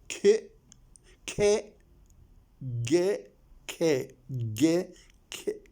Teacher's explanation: the tongue touches the soft palate the soft part of the palate